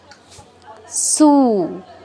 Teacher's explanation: স এর সাথে তো দীর্ঘ উকার আছে মানে দীর্ঘ সময় নিতে হবে বেশি সময় নিতে হবে সু বেশি সময় নিব